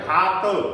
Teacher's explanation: घा पे बल लग रहा है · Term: बलाघात